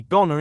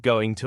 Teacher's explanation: native speakers often blend words for example they'll say goner instead of going to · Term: connected speech